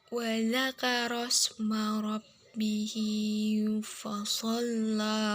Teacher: hukum mad silah qasirah sebab huruf H bertemu dengan huruf selain hamzah. Cara membacanya panjang 2 harokat.